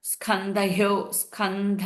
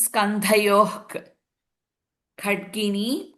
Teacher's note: in the second line स्कंधयो थ इज महाप्राण स्कंध सो that विसर्ग फॉललोड बाय ख again it will be H के साउंड